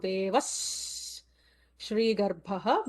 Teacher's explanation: Devaha, visarga followed by Sha, will add an extra sibilant